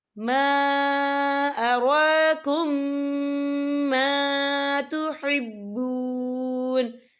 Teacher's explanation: ہم پچھلے میم کو اگلے میم میں مدغم کریں گے اور ہم یہاں غنہ بھی کریں گے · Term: ادغام شفوی